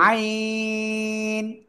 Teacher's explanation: আইন যখন আপনি উচ্চারণ করবেন, ঠিক আছে, অটোমেটিক আপনার বাতাসই বন্ধ থাকবে। এখন যদি হাইন এরকম উচ্চারণ করেন তা বাতাস বের হবে।